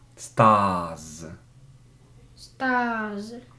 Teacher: Это гласный звук, после гласного звука тоже z окончание. Не с, а z звучит.